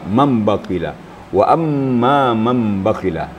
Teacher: Itu di dalamnya ada nun sukun yang tersamar. Jadi apabila bertemu dengan huruf ba, maka nun itu dibunyikan menjadi mim. Jadi mim ba, mambakila, wa amma mambakila. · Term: ikhlab